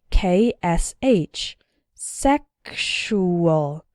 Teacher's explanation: in the word sexual the X sounds like ksh